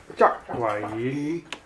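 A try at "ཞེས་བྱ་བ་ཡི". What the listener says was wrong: Lengthen this. Give your listeners a sign that it was a sa. Yi. And they kind of go yi, when they're reading out loud in Tibet. They just want the listener, the student, to know it's instrumental.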